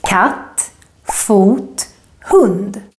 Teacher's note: the accent that goes up and then down in words that have only one syllable basically just one clap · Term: acute accent